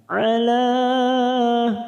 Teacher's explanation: mat yang bertemu dengan hamzah di lain kalimat, mat jaiz munfasil 4 harokat kita panjangkan